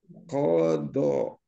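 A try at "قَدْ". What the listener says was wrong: Kodok, koknya jangan panjang, Pak. Nah, kodok. Panjangnya. Kodok.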